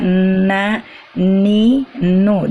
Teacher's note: Seperti kalau kita membaca na, ni, nu, dia tetap ada dengungnya, cuman pendek dengungnya itu, tidak panjang